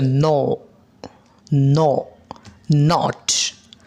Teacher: During production of this sound, এই সাউন্ডগুলো উৎপাদিত হওয়ার সময় বা উচ্চারিত হওয়ার সময় air flow pass through nose by stopping air flow in the oral cavity. অর্থাৎ এই নাজাল স্টপ সাউন্ডগুলো উচ্চারিত হওয়ার সময় এয়ার স্ট্রিম বায়ুর প্রবাহ মুখে বন্ধ হয়ে নাক দিয়ে যাবে, তখন নাজাল স্টপ সাউন্ডগুলো উচ্চারিত হবে।